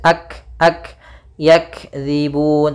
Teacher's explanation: Kaf ada sedikit ya sifat hamasnya ak ak yakzibun tapi tidak boleh putus tidak boleh yakzibun enggak